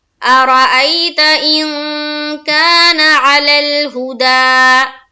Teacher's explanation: ای میں یا لین کا قاعدہ ہے، جلد پڑھیں گے اور نرمی کے ساتھ پڑھیں گے